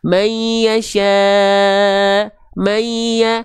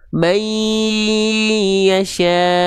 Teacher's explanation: Karena dia n-nya sudah lebur ke ya. Ditahan dua harakat disertai dengung.